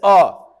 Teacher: अ, इसका उच्चारण स्थान है कंठ